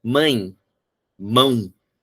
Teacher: Parece que ela puxa um pouco com o som nasal, ele puxa um pouco a sonoridade do I e do U.